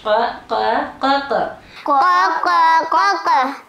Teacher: یہ بھی حروف لہاتیہ میں سے ہے اور یہ موٹی آواز والا ہے